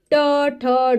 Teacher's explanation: इन का उच्चारण स्थान यानी कि जब हम इनको बोल तो हमारी जीभ दांतों का जो ऊपर वाला भाग है उसको मूर्धा कहा जाता है वहां से बोले जाते हैं